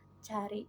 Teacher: gabungan antara daun lidah dengan langit-langit keras seperti pada huruf C pada kata cari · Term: Laminopatal